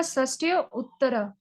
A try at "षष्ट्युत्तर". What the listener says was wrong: नहीं, षष्ट्युत्तर। ट्यू का उच्चारण करना है, शश एक साथ कीजिए, ट्यू एक साथ कीजिए, षष्ट्युत्तर।